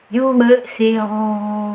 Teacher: Contoh yang kedua, yubsirun. Di sini ada qalqalah huruf ba di tengah kata nih, jadi pantulannya kecil saja sambil jalan ya